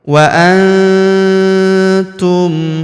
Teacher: maka nun sukunnya melebur ke huruf tu kita baca dengung dan samar. Dengungnya kita tahan 2-3 harokat.